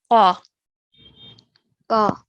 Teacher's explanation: Really try and make a thick and heavy sound coming from the middle of your throat for this Qaf.